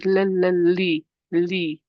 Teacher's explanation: I will use the tip of my tongue to place or touch just behind my top incisors, so away from the gum line. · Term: light lam